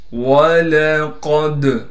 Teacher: قاف کو موٹا کر کے پڑھنے کے ساتھ قاف کو دال سے ملائیں گے۔ دال حروف قلقلہ میں سے ہے، دال ساکن ہو گیا، لہٰذا دال کو قلقلہ کیا جائے گا، یعنی دال میں ہم آواز کو ہلائیں گے۔